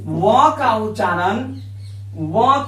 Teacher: व का उच्चारण दंत प्लस ओठ यानी दंतोष्ठ वर्ण है।